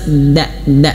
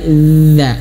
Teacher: bukan hanya sekedar da tapi za, ada aliran suara gitu ya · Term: huruf dzal